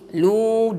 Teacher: Lam di sini mad asli, lu dua harakat, jangan lebih.